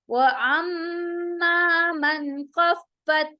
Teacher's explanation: इजहार हो रहा है, यानी हम नून साकिन की आवाज को शो करके पढ़ेंगे क्लियरली, उसे वाजिहा करेंगे।